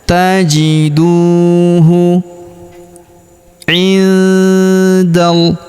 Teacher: Huruf nun sukun bertemu da, maka nun sukunnya melebur masuk ke huruf da. Kita baca dengung dan samar. Dengungnya kita tahan 2 sampai 3 harokat.